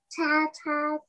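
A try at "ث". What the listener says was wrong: Yeah, these have three dots, yeah? They are not ta anymore.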